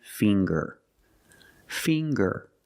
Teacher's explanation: We see the nasal sound, plus the hard G, the G. Ger.